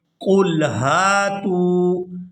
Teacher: یہاں قاف کو پورا ادا کرتے ہوئے لام ساکن کے ساتھ ملائیں گے